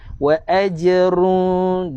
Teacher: Dengung dengan memasukkan terus ke dalam huruf waw. Tu wa aj, jaga huruf jim, qalqalah sughra, ada lantunan kecil.